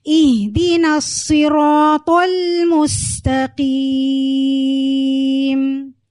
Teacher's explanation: صاد موٹا کریں گے، موٹا کیسے کرتے ہیں، زبان کو پورا آپ اوپر سے اوپر اٹھا لیں، تالو کی طرف لگا دیں تو آپ کا حرف موٹا ہو جائے گا